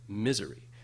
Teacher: the stress is on the first syllable, misery. But those 2 second syllables are not equally, they're both unstressed, but the second one, the z, has a reduced vowel.